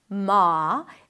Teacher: You start with an M sound, then it's the A as in father, ma.